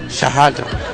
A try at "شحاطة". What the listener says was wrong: You very good.